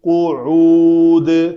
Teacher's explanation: قاف کے بعد عین کا وسط حلق سے اس کا مخرج ہے تو وہ وہاں سے ادا ہونی چاہیے.